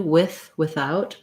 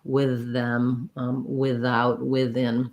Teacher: Although the word with, some people pronounce that with a voiceless th, like I do, with, without. Many people also pronounce that with a voiced th, with them, without, within. So either one is an acceptable, correct pronunciation for that sound.